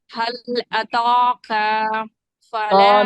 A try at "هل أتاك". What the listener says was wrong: ثانی هل أتاك بس زبر نہیں کھینچنا. هل أتاك بس کافی. هل أتاك.